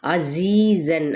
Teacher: عین کو وسط خلق سے ادا کرتے ہوئے زی پہ یا مدہ صفیر لانی ہے، تنوین زبر ہے تو یہاں پر اظہار کا قاعدہ ہوگا کیونکہ آگے ہا حروف حلقی میں سے حکیمہ، ٹھیک ہے۔